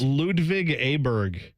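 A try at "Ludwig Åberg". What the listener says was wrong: It's got the accent on it. So the A becomes an O.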